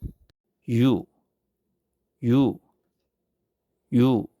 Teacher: It's similar to u but start with a soft e sound. round your lips again and say it smartly.